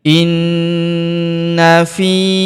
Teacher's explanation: huruf na kita tahan dan kita tekan serta kita dengungkan dua sampai 3 harakat karena terdapat tanda tasdid di atasnya yang ini.